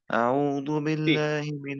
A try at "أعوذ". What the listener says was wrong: again you said do. Again you said do, not do. Do means without dot is do. Without dot is do. Ra when it comes with dot, that is zu. Zaitun Zoo. Okay, this is not raw dot zoo also, and this is not dal do. This is in between za and dal.